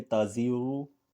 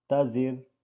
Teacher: جیسے تازیرو، لیکن جب ہم نے اس پر وقف کیا تو را سے پہلے زیر ہونے کی وجہ سے ہم نے اس کو باریک کر دیا